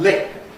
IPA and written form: lɪk̚ (lick)